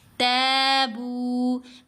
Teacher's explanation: إِلَّا الَّذِينَ تَابُوا، تا کو لمبا کریں گے، ساتھ الف ہے نا، زبر کے ساتھ الف ہے تو حرف مدہ ہے، با کو بھی لمبا کیا، واو مدہ آ گئی